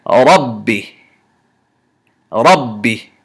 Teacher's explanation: We don't do qalqala on this ba sukoon